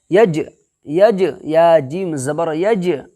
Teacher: جیم کا مخرج کیا ہے؟ زبان کا بیچ اور اوپر کا تالو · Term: قلقلہ